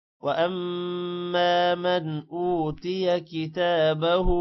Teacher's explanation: وَأَمَّا مَنْ أُوتِيَ كِتَابَهُ، میم کے بعد الف ہے، لمع ہوگا، من پر غنہ نہیں ہوگا حروف حلقی کی وجہ سے